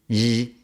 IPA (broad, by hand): ʝ